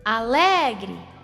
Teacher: A sílaba lé é a mais forte. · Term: sílaba tônica